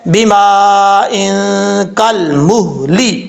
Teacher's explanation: یہاں پر مد متصل ہے، 5 الف کے برابر لمبا کریں گے